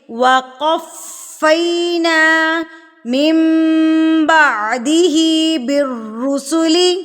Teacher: وقفینا فا کے اوپر تشدید ہے تو اس کو مضبوطی سے پڑھیں گے، شدت سے پڑھیں گے